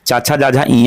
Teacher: जो च वर्ग है ये तालु से बोला जाता है